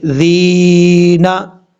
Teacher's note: حمزہ نون زیر ان، نون لام زبر نل، ان نل لام زبر لا، ان اللہ، نون کے اوپر شد ہے، غنہ کریں گے ایک الف کی مقدار، اور نون کو لام سے ملائیں گے، بیچ میں الف کو چھوڑ دیں گے۔ ان الذین، ذال کے بعد جو یا ہے یہ یا مدہ ہے، ایک الف کی مقدار اس کو لمبا کر کے پڑھیں گے